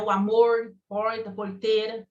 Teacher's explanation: E aí você vai ter a mesma coisa com o R retroflexo, que é falado em algumas regiões do Brasil